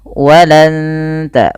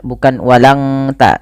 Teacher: ditahan suara nunnya dan disamarkan ke huruf ta. Makhraj huruf ta ini ujung lidah menempel dengan perbatasan antara gusi atas dan gigi atas atau gigi seri atas, maka walan ta, bukan walang ta ya. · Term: ikhfa hakiki